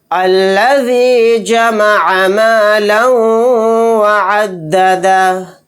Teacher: یہاں پر لام کے اوپر 2 زبر ہیں یعنی تنوین، تنوین کے بعد واو آ گیا تو یہاں پر ادغام یرملون کا قاعدہ ہوگا، لام کو واو میں ملاتے ہوئے غنہ کے ساتھ پڑھیں گے